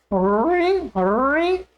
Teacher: जिह्वा का आगे का भाग मुड़ करके मूर्धा में लगेगा